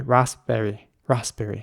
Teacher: you have to basically not even pronounce the P that much after the S. So it's basically just ras and then berry.